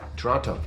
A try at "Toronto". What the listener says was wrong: Canadians don't pronounce the T.